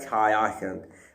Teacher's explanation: दंत सा का तालव्य सा बन गया